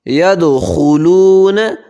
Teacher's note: خا کو موٹا کریں گے، یہ موٹے حروف میں سے ہے